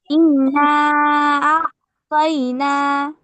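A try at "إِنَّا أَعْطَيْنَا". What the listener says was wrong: এই যে ইন্না, কি গুন্না, এটা গুন্না না করে পড়তেছো যে, আজব গুন্না আসছে না?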